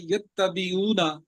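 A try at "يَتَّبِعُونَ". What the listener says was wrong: नहीं नहीं, यत्तबिऊना, युत्ता नहीं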